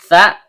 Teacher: Tha, ujung lidah bertemu dengan ujung gigi seri atas.